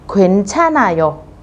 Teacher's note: chữ H các bạn sẽ không đọc, các bạn đọc nối chữ N lên trên